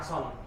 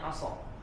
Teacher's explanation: Walaupun dia ada tanwinnya, dia tidak boleh dibaca ason, tapi dibacanya aso.